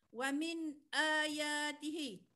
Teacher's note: hujung lidah kita nun mati tu bertemu dengan langit keras di atas · nun mati bertemu dengan hamzah kena baca dengan jelas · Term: izhar halqi